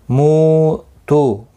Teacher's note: مو واو مدہ ہے، تو بھی واو مدہ ہے، دونوں کو ایک ایک الف کی مقدار کے برابر کھینچ کر پڑھیں گے